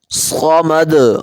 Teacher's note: صاد سیٹی والی حروف میں سے بھی ہے اور اس کو موٹا بھی کرتے ہیں، صمد، اور آخر میں قلقلہ ہوگا، اللہ الصمد، اللہ الصمد۔